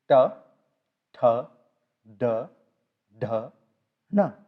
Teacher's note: Then the third possible position is where from you say t, th, d, dh, na, where the tip of the tongue rolls back and hits the front of the arch, the roof. You get t, th, d, dh, na.